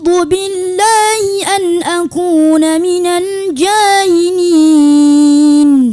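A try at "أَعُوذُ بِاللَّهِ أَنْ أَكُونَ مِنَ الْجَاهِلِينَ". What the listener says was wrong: Ya, saya minta jangan terlalu banyak huruf itu ke sengau, ke khaisumnya. Jangan banyak kali ke hidung ya. Huruf itu banyak nanti dijauh itu apa, rongga mulut.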